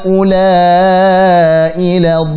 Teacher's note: La tipiskan, dha tebalkan dan panjangkan 6 harakat. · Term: Mad lazim